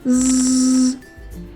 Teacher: Згадай, чи працює горло. Горло працює, тож звук З- дзвінкий.